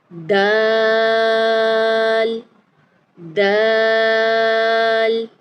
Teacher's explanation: دال کو سختی سے ادا کرنا ہے. زبان کی جو نوک ہے ٹپ آف دی ٹنگ جسے کہا جاتا ہے وہ اوپر والے سامنے والے دو دانتوں کی جڑوں سے لگے گی